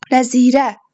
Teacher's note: Nəzirə vurğu sona düşür.